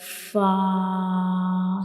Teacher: the edges of the upper front teeth will touch the inner side of the lower lip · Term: origin of fa